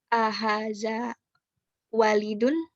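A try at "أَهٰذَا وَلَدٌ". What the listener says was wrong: Salah. Harokat lamnya yang salah.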